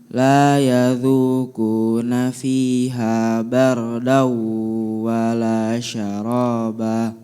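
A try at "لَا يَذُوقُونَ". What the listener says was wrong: Jelaskan qafnya. Qu la yadhuqu.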